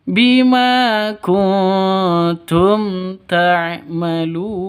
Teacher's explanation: Izhar safawi jelas ya, tidak boleh dengung, tidak boleh panjang